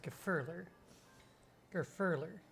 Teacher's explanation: The emphasis, the stress is on the second syllable there. The fur. So it's Grufurler.